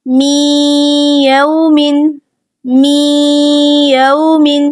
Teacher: ہم نے میم کو یا کے اندر داخل کر دیا، ملا دیا